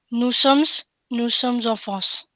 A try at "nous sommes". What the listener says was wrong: By the way, we don't say nous sommes, we say nous sommes. We don't say that S, okay?